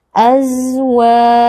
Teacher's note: Huruf zai adalah huruf rokhawah. Kita berikan sedikit aliran suara.